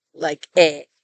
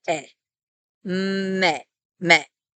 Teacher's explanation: It's a pure vowel, somewhere between the e of bed and the a of bay. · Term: tsere